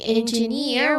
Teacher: We say engineer with those voice clearly rising on the final syllable